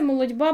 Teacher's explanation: молодьба - це буде дь, тому що ти глуха переходить в дзвінкий д перед наступним дзвінким приголосним б